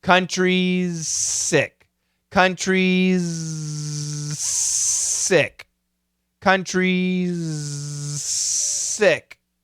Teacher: The faster we go, the smaller the Z, the bigger the S.